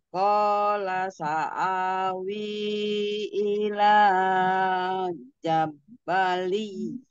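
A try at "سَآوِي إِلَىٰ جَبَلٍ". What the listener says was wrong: Jangan kepanjangan ilahnya. Ila jabali. Di sini hati-hati ada idgham digunah. Kasretain ketemu ya ya. Jabali ya.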